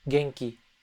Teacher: But that N has a G, a soft G attached to it. Genki. From this N sound, we're going to seg into the G sound.